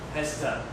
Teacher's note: So the z same idea the z is a voiced sound. Right? So the voiced sound becomes unvoiced s. and then the two becomes reduced.